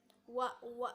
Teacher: Nah, untuk huruf wa ini cara pengucapannya itu dengan cara mengangkat bagian belakang lidah menempel pada hampir gitu, hampir menyentuh ke langit-langit atas gitu